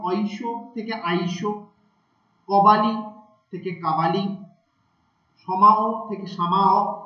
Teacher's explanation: কোনো কোনো ক্ষেত্রে দেখা যাচ্ছে যে অকার আকারে পরিণত করছে · অয়ের পরিবর্তে কোনো কোনো জায়গায় শ্বাসাঘাত বা স্ট্রেস তৈরি হচ্ছে এবং আয়ের ব্যবহার তৈরি হচ্ছে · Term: অয়ের পরিবর্তে আ